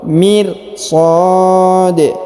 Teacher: Labil mir, huruf ra berharokat sukun. Mir sad, huruf sa dipanjangkan boleh 2, boleh 4, boleh 6 harokat